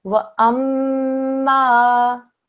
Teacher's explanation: because it says mushaddad letter and fatah on there. Okay, the mim mushaddad tells you that there's a 2-second ghunna sound,